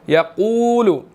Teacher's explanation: قاف جو ہے وہ یہاں پر موٹا ہے اور اس کے بعد واو مدہ ہے، یقول، ٹھیک ہے.